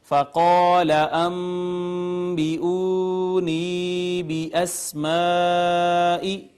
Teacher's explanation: فقال انبئونی باسماء، تو یہاں پہ یہ الف مدہ آ گیا، ما قبل مفتوح تھا اس کا، اس کے بعد نون ساکن کے بعد با آئی تو با حرف اقلاب ہے، اس نے ما قبل نون ساکن کو چھوٹی میم سے بدل دیا، اس کا اقلاب کر دیا۔ اس کے بعد آپ دیکھیے تو واو ما قبل مدموم واو مدہ، یا ما قبل مکسور یا مدہ، اس کے بعد پھر الف حرف مدہ کے بعد حمزہ سبب مد، اور یہ مد آ گئی مد متصل۔